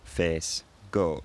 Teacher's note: You can hear the tongue and lips stay pretty much in the same place the whole time you're pronouncing the vowel. E, O, face, goat. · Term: monophthongs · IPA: [feːs] [göːt]